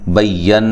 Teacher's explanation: नून मुशद्दद पे गुन्ना ज़रूरी है